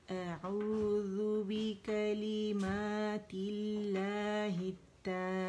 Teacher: یہ جو ہے اسم الجلالہ جو ہے باریک پڑا جائے گا کیونکہ اس سے پہلے کسر آ رہی ہے